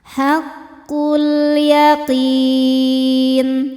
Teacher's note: Alif lamnya dinamakan dengan alif lam qamariah. Sebab alif lam menghadapi huruf qamariah yaitu huruf ya. Cara bacanya lam dibaca dengan jelas.